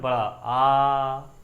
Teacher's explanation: विव्रत आपके ऐसे स्वर होते हैं जिनका उच्चारण करते समय आपका मुंह लगभग क्या हो जाए, पूरा खुल जाए। जैसे आपका एक ही है, वो कौन सा स्वर है, बड़ा आ, मेरा मुंह पूरा खुल गया, इसका मतलब ये कौन सा है, आपका विव्रत।